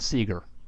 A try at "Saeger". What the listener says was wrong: That's not how it's pronounced. The A comes first.